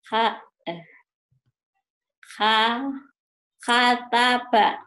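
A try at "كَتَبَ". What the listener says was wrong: Bukan ha, tapi kakak. Baju kakak. Baju kakak.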